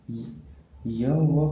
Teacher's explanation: अर्ध स्वर व्यंजन होते हैं। य व का उच्चारण करते समय मुखांग न के बराबर टच करता है।